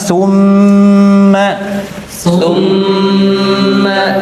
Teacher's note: Kemudian ketika membaca idgham bighunah ya cara membacanya ini ada ee ada perbedaan dengan gunah pada umumnya. Ah kalau gunah yang nun tasydid dan mim tasydid itu sempurna lewat hidung